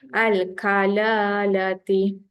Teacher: Kalala tu 2 kali. La pertama panjang.